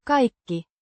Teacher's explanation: it sounds like kaikki with a slight diphthong I sound